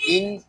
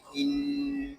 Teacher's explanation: حمزہ نون زیر ان. یہاں نون مشدد ہے اور نون مشدد کو ہمیشہ غننے کے ساتھ پڑھتے ہیں. اس کو ان اس طرح نہیں پڑھیں گے.